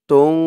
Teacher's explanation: এখানে ইকফা গুন্না হবে এই যে নুন সাকিনের পরে ইকফার 15 হরফের এক হরফ ফা আসছে